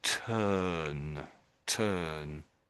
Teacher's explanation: it's not really a U sound, it's not really an R, it's its own little sound. Um, and I would say the sound there is sort of an kind of a sound, sort of an, to make it simple, it's a kind of an uh.